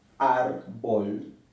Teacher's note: La palabra árbol se acentúa en la penúltima sílaba, árbol, y lleva tilde aquí porque no termina en N, S o vocal, termina en L. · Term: palabras graves